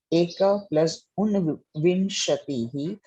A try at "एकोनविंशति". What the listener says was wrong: Ekona, not un. Una.